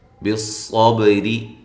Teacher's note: صاد کو خوب موٹا کریں، با پہ قلقلہ کریں، را باریک کریں